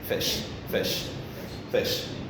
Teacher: When you say fish, it goes up, but just a little bit.